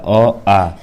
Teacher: अ जो है कंठ ध्वनि होती हैं